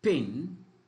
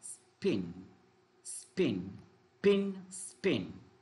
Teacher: for example ping is aspirated unaspirated spin